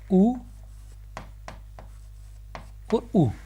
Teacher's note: ओष्ठ्य स्वर, वे स्वर जिनका उच्चारण ओष्ठ से होता है